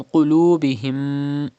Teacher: Pronounce qaf with thicker voice because it is a mustaliya letter.